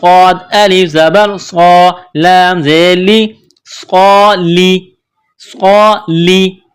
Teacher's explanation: صاد کو موٹا پڑھا جاتا ہے اور سین کو باریک پڑھا جاتا ہے. تو یہاں صاد ہے، صاد کو موٹا پڑھیں گے.